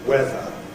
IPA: ˈweðə